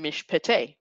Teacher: the schwa under the pay right is vocal because it is preceded by the consonant shin and not a short vowel